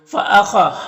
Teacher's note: خا حروف مستعلیہ میں سے پر پڑھیں گے